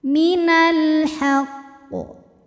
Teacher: jika berhenti ada hukum qalqalah kubra karena ada huruf qalqalah yaitu qaf yang matinya itu karena berhenti, maka dibaca memantul dengan pantulan yang besar.